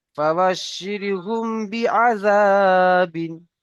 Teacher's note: মিম সাকিনের পরে বা এসেছে তাই মিমকে একালিফ পরিমাণ গুণনা সহ পড়তে হবে